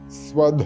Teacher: ധ തൊണ്ട ചേർത്തുകൊണ്ട് ഉച്ചരിക്കേണ്ട ധയാണ് സ്വധ അതല്ലാതെ സ്വദ എന്ന് ഉച്ചരിച്ചു ഉച്ചരിച്ചു പോകരുത് ധ എന്ന് തന്നെ വരണം